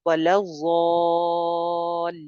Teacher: अलिफ मद्दा के बाद आगे आपको नजर आ रही है शद लाम के ऊपर, उस शद की वजह से अलिफ मद्दा के ऊपर मद आ जाएगी जिसको 3 अलिफ लंबा किया जाएगा।